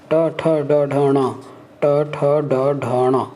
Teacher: मूर्धा ट ठ ड ढ न, ऊपरी जबड़े के हिस्से में जहाँ देखिए, जहाँ जीभ जहाँ कर टकरा रहा है, ट ठ ड ढ या, ट ठ ड ढ ण, ट ठ ड ढ ण। देखिए ऊपरी जबड़े के हिस्से में, मांस वाले हिस्से में जीभ ऐसे राउंड होके जाके मिलता है, मिल रहा है, उसको बोलते हैं हम मूर्धा।